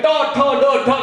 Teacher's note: મૂર્ધન્ય ટ ઠ ડ ઢ ણ એ જીભ છે ઉપર ભટકાય તો જ એ ઉચ્ચાર સ્પષ્ટ થાય